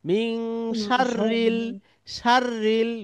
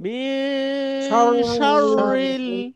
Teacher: ঠোঁট দুইটা গোল হয়ে সার এরপরে রটা পাতলা হবে